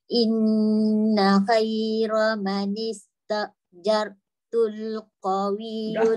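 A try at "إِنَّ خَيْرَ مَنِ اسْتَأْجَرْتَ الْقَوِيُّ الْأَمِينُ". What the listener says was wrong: Fathah tu bukan dhamma. Jarta, bukan jartu.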